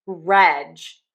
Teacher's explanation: for registered, we are going to stress syllable number one